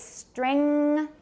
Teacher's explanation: that's an ng as far as i'm concerned it really should be velar